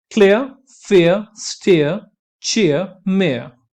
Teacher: यहां पे आर की साउंड आपको बिल्कुल भी सुनाई नहीं देगी क्योंकि वो आप वाउल में कन्वर्ट कर देते हैं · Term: डिप्थोंग ऑफ आर